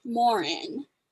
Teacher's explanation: it's actually pronounced morin so there's emphasis on the second syllable